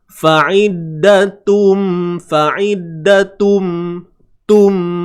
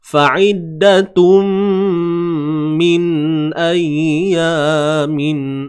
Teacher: Masukkan bunyi tanwin tu, tun tu, ke dalam mim. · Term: idgham bi gunnah